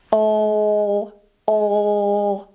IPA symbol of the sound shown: ɫ